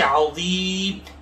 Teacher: عظیمی، میم کے نیچے زیر ہے، وقف کی وجہ سے عظیمی سے عظیم، میم کو ساکن کر دیں گے۔ یہاں مد عارض وقفی ہے، مقدار 2 یا 2.5 الف کے بقدر ہے۔